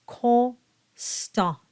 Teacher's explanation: Now, of course, be mindful not to voice the N in the word constant. That O and that N go together to form that nasalized closed O.